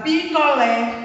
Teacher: A palavra picolé, a última sílaba é a mais forte. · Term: sílaba tônica